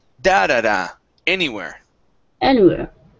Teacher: we actually put the stress at the very beginning and then at the end